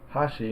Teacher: the first syllable is kind of high and immediately after that first accent syllable the pitch goes down